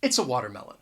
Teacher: I am going to use the article a, but I'm going to pronounce it with the schwa sound